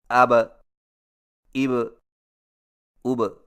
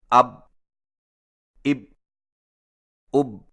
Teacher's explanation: حرف با پر جزم آئے تو دونوں ہونٹ آپس میں مل کر الگ ہو جاتے ہیں اور قلقلہ ہوتا ہے، جیسے اب، اب، اب۔